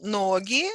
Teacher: Нога, stress on the last syllable. In plural, ноги, stress moves to the first syllable.